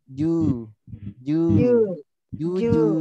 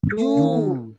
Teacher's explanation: Tipis domanya, monyongnya tidak membulat. Bibirnya yang depan nih ya ketika monyong tidak bergetar, tidak du, tapi ju, ju, ju, ju.